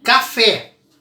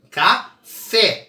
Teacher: Fé é a sílaba mais forte. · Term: oxítona